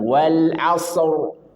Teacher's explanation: Diakhiri dengan ro di akhir ayat sebelumnya sukun sebelumnya domah. Maka dia wajib tafkhim tebal.